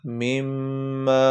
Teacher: میم کو میم سے ملانا ہے اور یہاں غنہ ہوگا